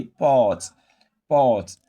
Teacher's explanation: the R controlled vowel OR is pronounced as a long OR